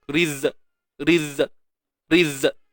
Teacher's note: berlakunya seolah-olah sifat syiddah, iaitu suara yang tertahan.